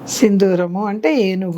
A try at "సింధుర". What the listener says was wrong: మళ్ళీ దీర్ఘం లేదండి దీనికి, సింధూరము అంతే. సింధూరము వేరు, సింధురము వేరు.